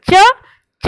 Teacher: और जब हमने बोला चा बोला तो जब जो जबान होती है उसका बीच का हिस्सा हमारे ऊपर के हिस्से को छूता है